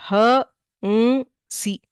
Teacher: the lips close ಆರ್ not touch ಆರ್ not does not matter you are closing the mouth and producing the nasal tone that is ಅನುಸ್ವಾರ ಹ ಮ್ ಸಿ not ಹ ಮ ಸಿ there is A subtle